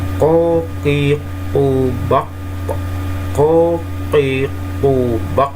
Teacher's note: huruf qaf ini posisinya ada di tenggorokan ya. Artinya di bagian ujung pangkal.